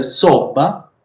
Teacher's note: Conversely, in sobba, we can note the Celiese geminated consonant plus the Francavillese final vowel, while the stressed vowel remain the same in the two dialects.